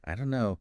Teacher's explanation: Another example is maybe I don't know saying each word separately sounds a bit formal right but we often hear it as I don't know the don't and no just merge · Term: linking